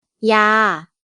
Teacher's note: Il n'y a pas de signe de tonalité. La syllabe est vivante puisqu'elle se termine par une voyelle longue. La consonne initiale est basse, donc le ton est plat.